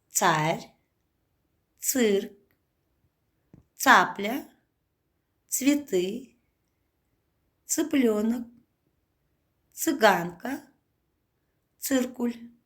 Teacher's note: звук «ц» глухой и всегда обозначает твердый согласный звук